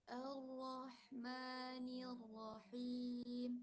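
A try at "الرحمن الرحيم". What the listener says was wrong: Mimnya, mim yang sukun aridhah tadi itu jangan dilepas terlalu cepat. Tahan dikit. Supaya bunyi gunnah di janur hidung. Jadi makhrajnya gunnah itu di janur hidung.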